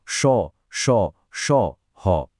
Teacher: উষ্ম কথাটার মানেই হল শ্বাস বা গরম বাতাস। এই বর্ণগুলো উচ্চারণ করার সময় একটা লম্বা শ্বাস বা হিস হিস আওয়াজ হয় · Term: উষ্ম বর্ণ